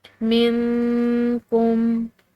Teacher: نون ساکن کی جو آواز ہے اس کو ہم نے ناک میں چھپاتے ہوئے نکالنا ہے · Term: اخفا